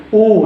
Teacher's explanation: Lalu U, bibir itu harus maju gitu. U seperti itu.